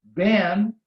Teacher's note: If you don't close your lips, you pronounce then